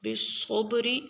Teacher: را مکسور ہے اس کو ہم باریک پڑھیں گے